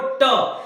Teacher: आप जब टे बोलोगे तो आपकी जो जीभ है आपके मूर्धा से टकराएगी।